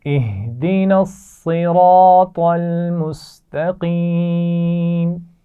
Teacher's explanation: صاد را اور طا تینوں کی آوازیں موٹی ادا کی جائیں گی